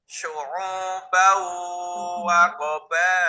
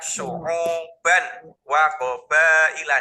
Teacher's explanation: tanwinnya itu suara N itu harus dimasukkan ke huruf berikutnya. Huruf berikutnya adalah huruf wawu. Berarti bunyinya menjadi syu'ubau gitu. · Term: idgham bi gunnah